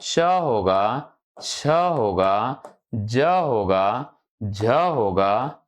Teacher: इनको स्पर्श संघर्षी, स्पर्श संघर्षी वर्ग कहा गया है। किसको? तो च वर्ग को।